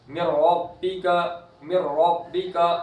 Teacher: نون کی پوری آواز را کے اندر غائب ہو جائے گی، پورا کے پورا نون را میں داخل ہو جائے گا، را کے ساتھ مل جائے گا، نون کی آواز بالکل بھی نہیں رہے گی باقی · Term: ادغام تام